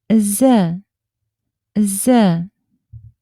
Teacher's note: El sonido Z es equivalente a una S, pero vibrante.